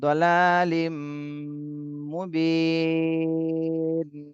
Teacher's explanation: লিম, এখানে গুন্না করতে হবে তানভিনের পরে। এখানে হলো তানভিনের পরে ঈদগামে বা গুন্নার হরফ আসছে, জন্য গুন্না সহ মিলাতে হবে